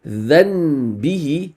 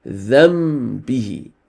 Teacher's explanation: you switch the sound from the sound of a Noon Sakin to the sound of a meme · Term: Iqlab